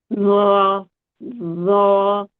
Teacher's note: जबान की नोक जो है सामने के दो दांत हैं उसके किनारों से लग रही है